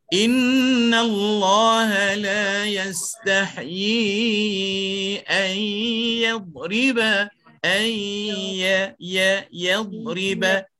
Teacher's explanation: Huruf ya kekal sebut daripada tengah lidah.